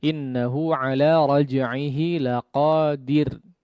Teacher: huruf ra-nya perhatikan di sini ditipiskan kondisinya